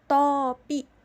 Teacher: pada open atau terbuka, posisi lidah di bagian belakang terdapat fonem O